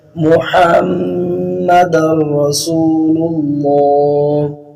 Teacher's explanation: جو ہا کے بعد میم مشدد ہے اس پہ دونوں ہونٹ ملا کے پڑھا جائے گا